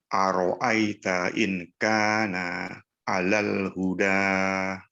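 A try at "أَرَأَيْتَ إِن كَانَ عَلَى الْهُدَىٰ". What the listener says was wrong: Baik, ikhfanya dijaga, Pak. Hudanya cukup 2 harokat. Jangan kita terpengaruh dengan tidak terpengaruh dengan tanda itu, dengan tanda pedang di sebelahnya. Kalau kita ingin wakaf, mesti 2 harokat saja cukup. Ya, aro'aita in kana 'alal huda. Tidak dipanjangkan lebih dari 2 harokat.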